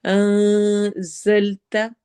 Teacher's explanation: زا میں سٹی والی آواز ہوگی